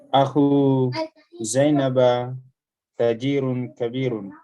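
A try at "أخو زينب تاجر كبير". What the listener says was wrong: Ulang bacanya, panjang pendeknya salah.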